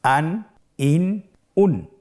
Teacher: প্রত্যেকটি উচ্চারণের শেষে দন্ত ন উচ্চারিত হচ্ছে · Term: তানবিন